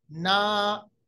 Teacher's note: और पे जो मद आती है इसको हम कह सकते हैं मद असली। जैसे ना, ये नून के साथ जो अलिफ है ये 1 सेकंड के बराबर या 2 सेकंड के बराबर उसको लंबा कीजिएगा। जैसे मैंने आपको बताया, एक अलिफ के बराबर या 2 हरकत के बराबर इसको हमें लंबा अदा करना है।